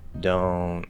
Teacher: still going to the end i still push out the t now we'll commonly stop the t